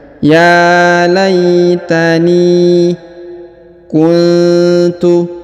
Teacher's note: huruf nun sukun bertemu ta maka didengungkan dan disamarkan